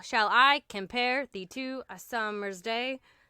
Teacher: It's 10 syllables with the emphasis placed on the second syllable. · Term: iambic pentameter